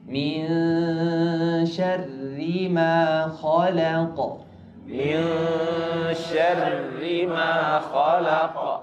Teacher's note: Ar-ra muraqqaqah, musyaddada muraqqaqah. Tipis dan tasydid.